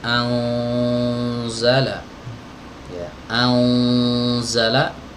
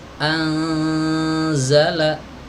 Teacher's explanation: karena huruf Zai Itu adalah huruf yang tipis maka Nun di sini dibaca samar dan tipis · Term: ikhfa